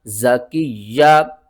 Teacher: کاف کو ہم نے یا کے ساتھ ملانا ہے اور یا کے اوپر سختی کرنے